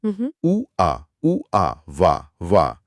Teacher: उ और आ को तेजी से बोलने पर व की आवाज बनती है।